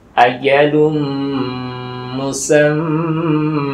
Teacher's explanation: Nun bertasydid, mim bertasydid, atau diistilahkan hunnah musyaddadah, berdengungnya karena ada tasydid.